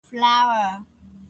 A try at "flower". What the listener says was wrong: Đúng rồi, flower.